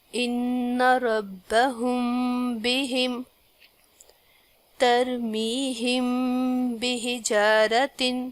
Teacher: میم ساکن کے بعد با آ رہا ہے تو غنہ کے ساتھ میم پڑھا جائے گا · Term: میم ساکن کا اخفاء